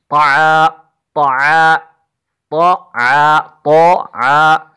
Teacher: زبان کی نوک جب اوپر کے اگلے دو دانتوں کی جڑ کی طرف والے ادھے حصے سے لگتی ہے اس وقت یہ لفظ طا ادا ہوتا ہے